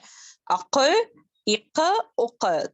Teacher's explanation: قاف جو ہے نرم تالو سے ٹچ کرنے سے ادا ہوتا ہے